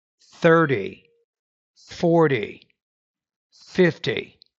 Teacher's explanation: So, you're stressing the first syllable there.